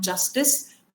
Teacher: तो d और j को मिला के j साउंड बनता है